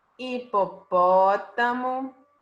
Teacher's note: então qual é a sílaba tônica é a antepenúltima e não é a última não é a penúltima